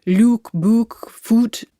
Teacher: In the north of England, they all stay at oo.